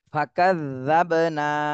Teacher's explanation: শুধু এই জালের উপরে তাসদীদ রয়েছে বলে একটু দেরি করব জালের উপরে, কিন্তু টান দেওয়া যাবে না, দেরি করতে হবে।